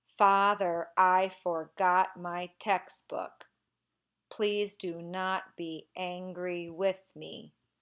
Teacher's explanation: There's actually a pretty consistent pattern here. You'll notice that the stressed and the unstressed syllables alternate every other one, and I began with a stressed syllable.